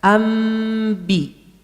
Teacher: Antara menyebut mim dengan ba sempat membuka mulut tak? Tidak, karena mim dan ba satu makhraj. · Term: ikhfa